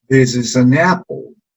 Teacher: La última palabra importante en la oración va a tener una pequeña subida y después una bajada.